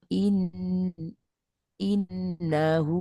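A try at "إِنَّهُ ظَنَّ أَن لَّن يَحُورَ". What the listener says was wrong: Tambah dengung ulang lagi. Innahu tambah dengung.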